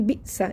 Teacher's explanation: ये साकिन हमज़ा को झटके से पढ़ेंगे